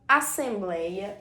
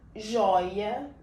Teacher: vogal e uma semivogal o que isso significa significa dizer que a vogal quando nós pronunciamos ela é tônica Então ela é mais alta quando nós falamos e a semi vogal é mais baixa então aqui nesse caso a vogal é o o porque nós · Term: ditongos abertos